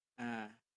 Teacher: ujung hamzahnya ada tekanan ada hentakan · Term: huruf hamzahnya